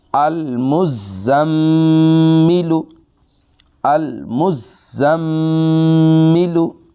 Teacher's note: اب جو غنہ کی مقدار ہے وہ ہے ایک الف کے برابر